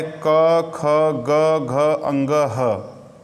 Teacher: ये जो इतने वर्ण आपके सामने दिख रहे हैं, ये वर्ण कंठ से बोले जाते हैं